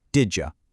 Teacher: Same thing with did you. The D and the Y blend together to make a j sound